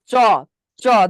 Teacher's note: যদি বলেন যে চ, চ দেখেন জিভটা উপরের তালুর সাথে ঘর্ষণ লাগে কিনা, চ লাগতেছে